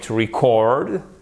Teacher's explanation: Mais là, l'accent tonique est sur la seconde syllabe pour un mot qui est écrit exactement de la même façon.